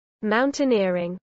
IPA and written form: ˌmaʊn.tɪˈnɪə.ɹɪŋ (mountaineering)